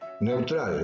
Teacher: La E es abierta, la U es cerrada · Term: diptongo